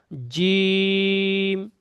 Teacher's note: জিমটা উচ্চারণ হবে পুরো জিভের মাঝখান দিয়ে উচ্চারণ হবে, চেপে বরকিন যাওয়ার মতো।